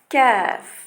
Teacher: alors que kaf s'appuie légèrement vers le devant du fond du palais. Donc, le qaf a un son un peu plus éloigné et profond près de la gorge, près de l'entrée de la gorge, alors que kaf va être en avant.